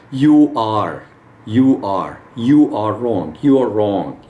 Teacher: We put a W or a W sound between the two.